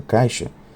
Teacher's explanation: A redução do ei e do ai é condicionada pelo segmento consonântico seguinte. Os segmentos j, como beijo, e o segmento sh, como caixa, são fonemas pronunciados na região alta da boca, o palato, assim como a vogal i. Dizemos então que essas consoantes e a vogal i são sons homoorgânicos quanto ao ponto de articulação.